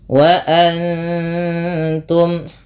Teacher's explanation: thai'i Wa Antum nun mati bertemu ta dibaca dengan bacaan Ikhfa cara membacanya yaitu dengan menyamarkan bunyi Nun ya kepada huruf ta · nun mati bertemu ta dibaca dengan bacaan ikhfa. Cara membacanya yaitu dengan menyamarkan bunyi nunnya kepada huruf ta, yang dimana kita ketahui bahwasanya ta makhrajnya atau tempat keluar huruf ta itu berada pada ujung lidah menempel dengan antara gusi atas dan gigi seri atas ya, dia di tengah-tengah antara itu.